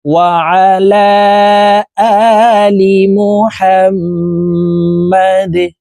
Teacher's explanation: দাল কলকলার হরফ নিচের দিকে ধাবিত করে ধাক্কা দিয়ে সাকিন করে ফেলবো